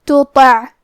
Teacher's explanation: کلمت تطع میں حرف تا ہے، پھر حرف تو ہے. یہ دونوں حرف کی ادائیگی ایک ہی ہے، لیکن حرف تا حروف ترقیق میں سے ہے، تو ہمیں تے کو پتلی آواز میں پڑھنا ہے، اور تو حروف تفخیم میں سے ہے، تو ہم تو کو موٹی آواز میں پڑھیں گے